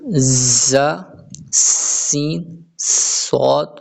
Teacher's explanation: ان 3 حروف ز سین صاد کو ادا کرتے وقت سیٹی کی طرح تیز آواز نکلتی ہے، اس لیے ان حروف کو حروف صفیریہ یعنی سیٹی والے حروف کہتے ہیں۔